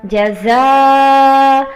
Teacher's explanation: زا کو سختی سے پڑھنا ہے، حروف صفیریہ میں سے ہے یہ